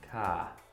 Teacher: And we just drop that R sound. It's kind of silent. It's just ah.